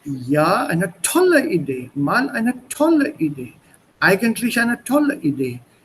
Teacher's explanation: The stress came on the adjective following the modal particle. So it's not ja eine tolle Idee, mal eine tolle Idee.